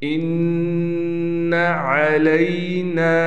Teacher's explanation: نون کے بعد الف آ گیا، اس کو بھی نون کو ایک الف کے برابر کھینچیں گے